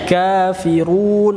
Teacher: kaf itu dia ada nafas yang keluar, nama sifatnya adalah sifat hamas.